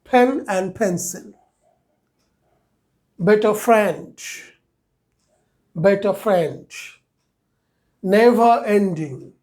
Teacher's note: তাহলে এ sound হলো সংক্ষিপ্ত মুখ খোলা রেখে এ